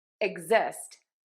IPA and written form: ɪgˈzɪst (exist)